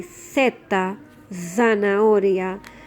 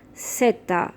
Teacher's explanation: Depending on where you live, the pronunciation changes. So mainland Spain, it will be theta, zanahoria. And in South America and Canary Islands, they will say seta.